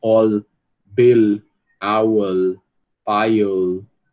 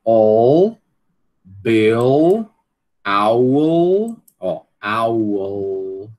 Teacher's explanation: a gente está acostumado a escutar, né, o L escuro nessas pronúncias em posição final de sílaba, ou seja, depois da vogal, né?